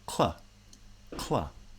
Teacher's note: However, when I pronounce clap, you can almost see k at the same time that the tongue at the back of the mouth is touching to make a k. The front of the tongue is in position for the L.